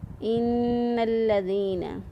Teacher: نون مشدد پر ہمیشہ گنہ ہوتا ہے۔ نون مشدد اور میم مشدد یہ دو ایسے حروف ہیں جن پر ہمیشہ گنہ کیا جاتا ہے، اس لیے یہاں پر گنہ کرتے ہوئے ہم نے نون کو ادا کیا۔